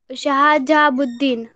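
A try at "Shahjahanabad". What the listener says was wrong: नहीं नहीं, शाहजहाबुद्दीन तो आपने वो साबुद्दीन गोरी को ही मर्ज कर दिया है। शाहजहांबाद। हाँ, शाहबुद्दीन गोरी आ गया इसमें तो।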